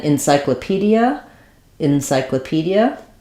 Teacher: this e gets changed more to an i again because this is an unstressed syllable